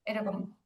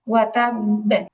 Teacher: ওয়া তাব শক্ত হয়ে কলকলা হবে তাসদীদ হওয়ার কারণে